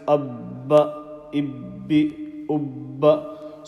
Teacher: So your lips remain together when you're making the actual sakin letter sound, the sukoon sound